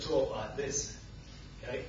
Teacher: Northern England English has lots of non-diphthongs. We tend to talk like this, okay? Very flat vowels, very like Japanese, in fact.